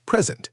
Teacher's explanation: If you stress the first syllable, it means a gift. Present. If you stress the second syllable, it means to give a speech.